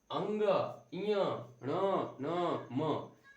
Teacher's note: अब इनमें से कुछ कुछ वर्ण ऐसे, अब देखिए, हाँ सबसे पहले जान लीजिए, ये जो है अंग, इय, ण, न, म, इसे नासिका वर्ण भी कहते हैं, यानी कि इसका उच्चारण नाक से किया जाता है, नासिका से किया जाता है।